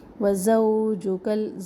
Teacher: انت یہاں پر ہم آواز ناک پہ چھپائیں گے، اخفا کریں گے. وزوجکل، زو واولین ہے، اس کو زو جگل نہ پڑے. زوجکل جنت، نون تشدید، نون مشدد ایک الف کے برابر.